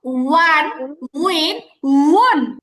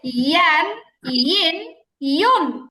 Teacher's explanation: যদি খেয়াল করতে পারেন দুইটার মধ্যে একটা ভালো মিল খুঁজে পাবেন, উচ্চারণের ঢংটা একই রকম। উন ঠোঁট গোল করে, ইন ঠোঁট ছড়াই দিয়ে, এতটুকুই পার্থক্য